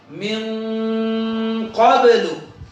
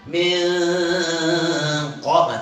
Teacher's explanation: nah nun matinya itu condongan ke huruf qaf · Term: ikhfa ab'ad